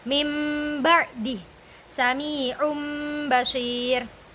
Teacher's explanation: jadi ketika ada nun mati atau tanwin bertemu dengan huruf ba, maka dibacanya seperti membaca mim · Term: iqlab, iklab